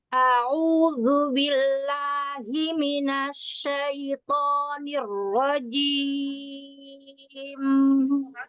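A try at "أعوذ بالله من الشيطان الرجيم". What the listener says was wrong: A'udzu billahi minasy. Jadi minasy itu jangan dipanjangkan ya. Jadi jangan tamplit. Minasyaiton. Nanti jangan minasya, jangan jadi panjang.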